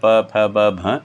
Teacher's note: ये आपस में दोनों होठ मिलते हैं, इनका उच्चारण स्थान ओष्ठ है, यानी होठ आपस में मिलते हैं पकार जब बोलते हैं। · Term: पवर्ग